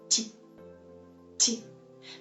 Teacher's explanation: we have to pronounce the last letter like soft T, T, T, because it stands before the soft sign.